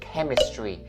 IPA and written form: ˈke-mɪs-tri (hóa học)